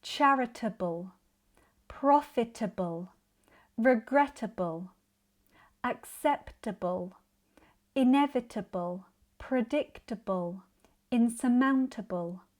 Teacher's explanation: because this is an unstressed suffix, we reduce the vowel sound. So, instead of a clear table ending, it sounds more like turble. · You may notice the stress in these words is not on the final syllable, table. It is unstressed and not pronounced as clearly. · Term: schwa sound